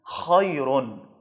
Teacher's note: خا کی ادائیگی کے وقت آپ کو اسے موٹا کر کے حلق سے ادا کرنا ہے، خیرن، کھا کی طرح نہیں پڑھنا ہے، خیرن نہیں پڑھنا ہے، خیرن، یہ اس کا صحیح مخرج ہے اور صحیح ادائیگی کا طریقہ ہے۔